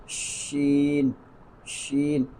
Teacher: جب آپ شین کو پڑھیں گے تو آواز پورے منہ میں پھیل جائے گی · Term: تفشی